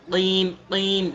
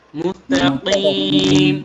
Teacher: কিম কিম, দেখেছেন গলার ভেতরে একটা বাড়ি খাবে। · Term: কফ